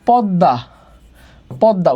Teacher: দয়ের সাথে মফলা থাকলে উচ্চারণ দ্বিত্ব হয়।